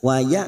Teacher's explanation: Hamzah sukun lagi kita baca jelas